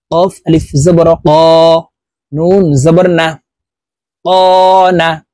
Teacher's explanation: কফ হরফ জিহ্বার গোড়া তার বরাবর উপরের তালার সঙ্গে লাগাইয়া উচ্চারণ করতে হবে